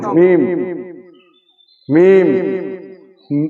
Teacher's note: মিম দুই ঠোঁটের শুকনো অংশ, মিম মিম, ঠোঁটটা অল্প ভিতর দিকে আসবে এইভাবে, মিম মিম।